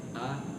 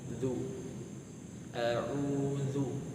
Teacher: Jadi a'udhu, bibirnya kurang lebih seperti ini. Ketika a terbuka mulutnya, a, kemudian agak monyong, zu, a'udhu